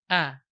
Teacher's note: Maka ikhfanya di sini juga dibaca tebal. A, tapi pengucapan a-nya tidak boleh ikut, cenderung ke nun, jangan ang, tapi a.